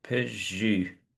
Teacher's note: u is a sound, as I say, it's similar to oo, but it's more to the front of the mouth. And one way of having a go at articulating it is to actually say E and then, purse your lips.